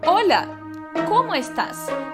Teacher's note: A minha entonação de pergunta começa no como